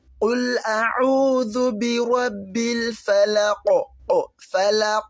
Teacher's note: Qaf. When you find the qaf with a sukoon, that implies that you're going to pronounce it now with an echo.